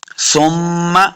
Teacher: سا کو نرمی کے ساتھ پڑھیں گے، سیٹی کی آواز نہیں آنی چاہیے ، میم کے ساتھ لائیں گے، میم مشدد ہے تو غنہ